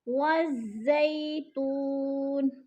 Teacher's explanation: ज़ई पे जैलीन है, जैलीन को खींचना भी नहीं है, झटका भी नहीं देना। · तू पे वो मद्दा है, वो मद्दा को खींच कर पढ़ना है।